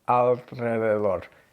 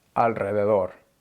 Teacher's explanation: The L in English is flat against the roof of your mouth. In Spanish, it's more with the tip of your tongue. So if you try to say alrededor with your tongue flat against the roof of your mouth, it's really, really hard.